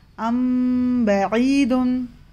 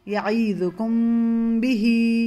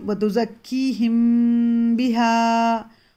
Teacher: मीम साकिन के बाद अगर बा आए तो उसको मीम की आवाज़ को गुन्ना करके छुपाकर इख्फ़े के साथ पढ़ेंगे, इख्फ़ाए शफवी होगा।